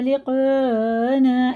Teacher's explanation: یہ مد متصل ہے کیونکہ اس کے بعد حمزہ آ رہا ہے، یہ چار الف کے برابر کھینچ کے پڑھنا ہے